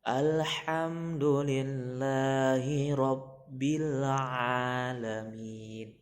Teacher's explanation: Mengucapkan huruf ain itu berada di tengah tenggorokan atau di posisi sini.